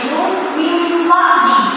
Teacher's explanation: Jadi kalau ada bacaan nun mati itu dibacanya jadi mim mati.